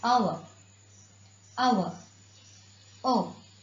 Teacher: Because H is silent in this word, it begins with the sound O.